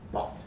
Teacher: it's a low back vowel